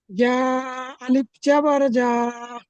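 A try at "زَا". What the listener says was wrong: জিম হচ্ছে, জিম হয়ে যাচ্ছে, সিটি দিতে হবে। যা, যা, সিটি দিন। যা, যা, সিটি দিন।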